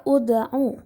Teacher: hukum tajwidnya adalah qalqalah sughra karena terdapat huruf dal berharokat sukun yang terdapat di tengah kalimat. Cara membacanya yaitu dipantulkan.